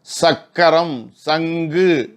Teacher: அடி அன்னத்தை, அங்கே உள் அன்னம் இருக்குது பாருங்கள், உள்நாக்க ஒட்டின மாதிரி அந்த அன்னப்பகுதியை உராய்வதனாலே பொருந்துவதனாலே பிறக்கக்கூடியது. உராய்தல் வேண்டாம், பொருந்துதலை வச்சுக்கும்.